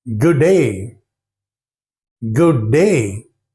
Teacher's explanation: they drop out the sound D in the word good so they don't sound to say good day as we do